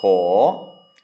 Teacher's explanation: It's ko kai or ang. So it's a high-class consonant and then a long vowel with no final. So that makes it a rising tone, a live syllable.